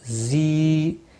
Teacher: یا مدہ ہے، 1 الف کے برابر کھینچ کر پڑھیں گے